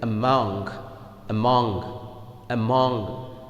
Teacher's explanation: So, the stress will fall on the mong, because this is the second syllable.